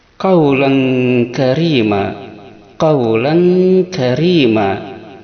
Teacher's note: ikhfa ab'ad ini yaitu berdengungnya ini mendekati eng.